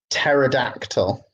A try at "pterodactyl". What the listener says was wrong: Pterodactyl. You don't pronounce the p. So pterodactyl.